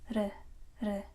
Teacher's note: in Korean we don't have r sound. It's somewhere in between r and l.